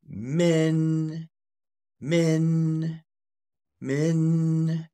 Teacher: him it make them plural we add yeah we add um a rising tone so that is coming from about level three going up to level five